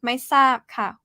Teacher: saab is falling tone